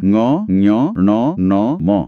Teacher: ଏଇ ପାଞ୍ଚଟିକୁ ଅନୁନାସିକ ବା ନାସିକ୍ୟ ବର୍ଣ୍ଣ କହନ୍ତି, କାରଣ ଏଗୁଡାକୁ କହିଲା ବେଳେ ନାକରୁ ବି କିଛି ପବନ ବାହାରେ।